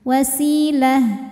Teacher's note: ini ta marbutah jadi H gede ya H sukun Kalau berhenti